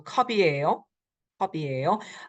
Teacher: the final consonant carries over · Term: liaison